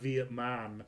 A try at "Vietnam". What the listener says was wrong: No, not, you put the M later.